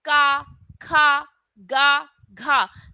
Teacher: तो ये जो साउंड है वो हमारे कहां से आ रहा है हमारे गले से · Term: कंठ